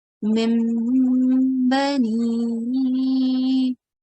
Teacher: the sound of nun will be exchanged with the sound of meen. Okay, so we read this as mim bani. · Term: iqlab